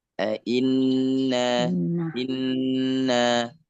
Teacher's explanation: Inna tahan itu ghunah musyaddadah.